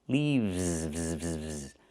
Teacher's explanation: We use the letter V and pronounce it VV plus the S making it Z sound like in zebra. · The singular form is leaf, but the plural form is not leaves, it's leaves. We use the letter V and pronounce it v, plus the S making a Z sound like in zebra. Leaves. One leaf with the F sound with no voice.